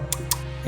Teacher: el dental /ǀ/ que usamos cuando decimos que no